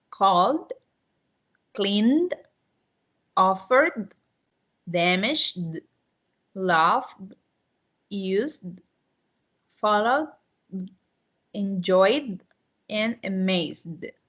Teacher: the most significant difference is you don't have that T sound. And you don't have that id sound.